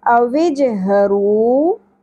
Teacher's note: ہ اقصی حلق سے گہرائی کے ساتھ، رو را پر ہوگا اور واو ساکن پہ ایک الف کے برابر ہم کھینچیں گے، حرف مدہ ہے۔